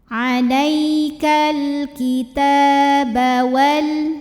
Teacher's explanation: Cara membunyikannya dipanjangkan taknya 2 harokat saja.